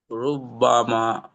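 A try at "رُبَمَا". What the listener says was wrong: এখানে একটাই বা দাবে রু পেশ বা জবর বা রুবা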